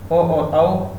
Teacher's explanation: ऐसे ही कंठ और ओष्ठ है, ओ दय तो कंठोष्ठम, ओ और औ इनका उच्चारण कंठ और ओष्ठ से होगा